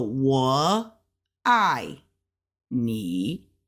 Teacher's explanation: it's a third tone then a fourth tone then another third tone